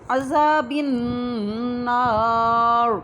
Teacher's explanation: جب نار پڑھنا ہے نا تو را کو ہم نے موٹا کر کے پڑھنا ہے